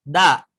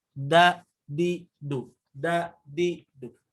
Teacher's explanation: Menggunakan kaidah mah si lidahnya ditempelkan ke gusi paling depan, gusi belakang gigi seri.